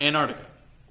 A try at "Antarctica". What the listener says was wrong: He's putting the T in the front. The way some people say it is quickly to where the first T is not there.